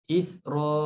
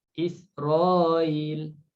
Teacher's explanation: Kalimah Israel untuk Abu Ja'far ini dia tashilkan hamzah. Bila kita nak tashilkan hamzah, kita boleh panjangkan mad sebelumnya itu 4 harakat.